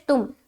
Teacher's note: کنتم، آگے تامیم پیش تم، ہماری آواز میم کی مخرج میں رک جائے گی، لوٹتی ہوئی معلوم نہ ہو